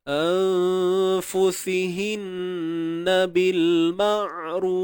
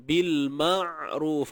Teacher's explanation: bawa makhraj ain tu betul-betul, sempitkan ain tengah kerongkong, cuma suara tu biar mengalir sikit